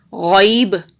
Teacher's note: غین حروف مستعلیہ میں سے ہے یعنی کہ موٹے حروف میں سے ہے تو موٹا پڑھیں گے، با کے نیچے زیر ہے، جلدی پڑھیں گے۔